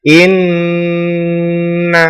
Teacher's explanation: setiap ada Non betah kita tomim bertasydid maka dibaca hunah musyaddadah cara membacanya berdengung yang sangat lama atau sangat berdengung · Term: ghunnah musyaddadah